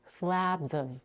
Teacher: Note that we reduce the vowel in of to a schwa. So it's not a or o, but a.